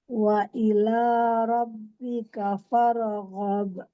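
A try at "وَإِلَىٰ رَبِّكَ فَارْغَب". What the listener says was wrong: Jangan fare. Pokoknya hati-hati pada huruf-huruf yang sering terpantul-pantul padahal sebenarnya bukan huruf qalqalah ya. Lam tuh.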